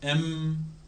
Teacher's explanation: एम में lips से हवा रोक रहे हैं, नाक से निकाल रहे हैं